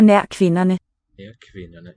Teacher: in this case, ND, we drop the D from the pronunciation.